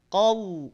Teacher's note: Tidak qaumun, tapi ko tanpa monyong, tanpa manyun, tanpa maju, tanpa mencucu. Qau, baru masuk pada huruf waw sukunnya, dia majukan bibirnya.